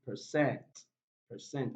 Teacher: the prime stress on the second syllable